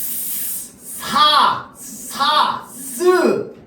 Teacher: 공기가 나오는 통로를 극단적으로 좁혀서 공기가 나오는 통로에 장애를 주죠